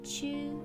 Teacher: the first kanji is pronounced jo and the second chu with a long u